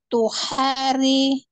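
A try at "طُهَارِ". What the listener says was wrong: jadi tuhari h-nya jangan panjang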